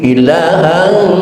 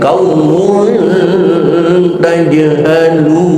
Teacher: Kalau ikhfa abaan kesannya suara ang. Seperti ilahan suara ang, tetapi ikhfa aqrab suaranya suara n.